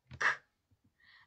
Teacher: слышится звук к звук к гласный мы произносим его с преградой звук к глухой мы произносим его без голоса